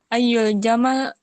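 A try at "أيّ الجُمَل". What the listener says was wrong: Jumal, bukan Jamal. Jangan Jamal, nanti Jamal jadinya unta.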